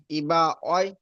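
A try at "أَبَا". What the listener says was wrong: ইবা নয়, আবা। আবা হামজা জাবার আ। আবা।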